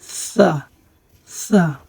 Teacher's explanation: সামনের উপরে দুই দাঁতের আগার সাথে জিহ্বার আগা লাগিয়ে তারপর আমরা উচ্চারণ করি